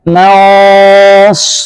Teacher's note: Shad dibaca tebal dengungnya.